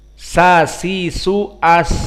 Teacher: di saat dibaca Sin disukunkan masih ada suara yang keluar